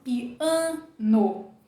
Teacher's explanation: a gente fala piano com um som totalmente nasal